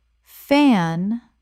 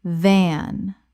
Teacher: The f is unvoiced. It is just air. The v is voiced. It is vibration. Keep your hand on your throat.